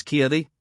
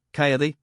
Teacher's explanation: the intransitive is changed into the transitive by the mere aspiration of an initial consonant as Ki to fall kayi to throw down or cause to